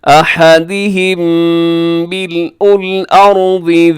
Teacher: میم ساکن کے بعد اگر میم آ جائے تو یہاں ہوتا ہے ادغام شفوی